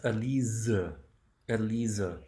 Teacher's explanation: The S in German is pronounced like a Z in English. So a voiced S